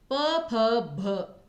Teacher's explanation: तो फ बोलते समय आपके दोनों होंठ जो है वो यूज होते हैं, तो इसलिए वैसे भी जो प वर्ग है उसका उच्चारण स्थान आपका ओष्ठ होता है।